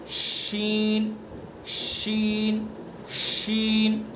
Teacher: شین زبان کا بیچ اور اس کے مقابل اوپر کا تالو جو جیم کا مخرج ہے وہی شین کا ہے. بس شین میں آواز کو پھیلا دیں گے ادا کرتے ہوئے